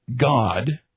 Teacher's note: The voiced velar stop g